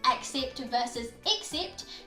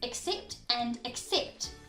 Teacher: in fast and natural conversation the a and e would turn into the schwa sound which is that unstressed vowel sound in english the uh sound so they end up sounding like accept and